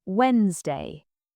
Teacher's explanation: People say Wednesday, but the D is silent.